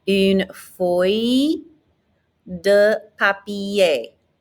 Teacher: we have this ILL, which is a Y sound and almost never an L sound